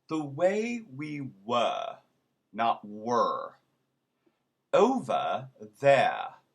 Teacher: r between two vowels is also silent